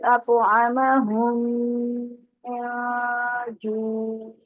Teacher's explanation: تو پہلی میم دوسری میں مدغم ہو رہی ہے